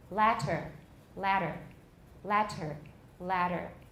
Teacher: i've turned the t into a voice tap